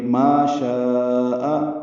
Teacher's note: اس کے بعد حمزہ آنے کی وجہ سے مد متصل ہے ایک ہی کلمے میں ہونے کی وجہ سے